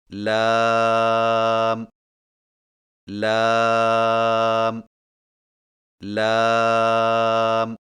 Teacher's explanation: لام کی ادائیگی میں زبان کے باریک کنارے کو اوپر والے دانتوں کے مسوڑوں سے لگا کر باریک آواز میں پڑھیں